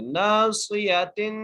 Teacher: اگلی عید پڑھتے ہیں ناصیۃ، جہاں پر نون ہے، نون کو ایک الف مقدار کھینچ کے پڑھیں گے، صاد کو موٹا کر کے پڑھیں گے، اور آگے یا ہے اور اس کے بعد تا ہے، تا کی چیز دو زیر ہے تو تا پر غنہ کریں گے